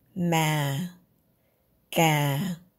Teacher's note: Yao huyền is a low tone, down tone. Start low and stay low.